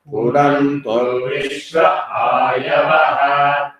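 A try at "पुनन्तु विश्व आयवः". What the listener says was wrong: So you should not give that gap after punantu. Punantu, there is no gap. Punanto vishva, like that you have to say.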